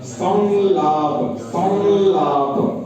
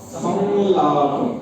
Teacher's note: अनुस्वार का उच्चारण ल को नासिका के साथ लेके बोलना पड़ेगा।